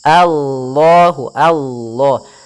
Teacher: a-nya tipis, kemudian lafal Allah-nya tebal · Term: lam tafkhim